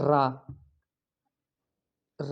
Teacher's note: पित का अर्थ है कांपता हुआ जिन व्यंजन के उच्चारण में जीवा का नोक वायु से रगड़ खाकर कांपती रहती है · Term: प्रक पित, प्रकंपित